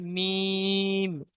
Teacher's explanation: দুই ঠোঁটের শুকনো অংশ থেকে উচ্চারিত হয়